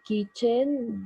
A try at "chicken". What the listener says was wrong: Okay, good. Good. Chicken, not kitchen. Chicken.